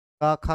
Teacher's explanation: ये का खा जितना भी हम लोग उच्चारण करते हैं कंठ से